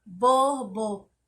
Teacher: então na palavra borboleta a sílaba tônica é o lê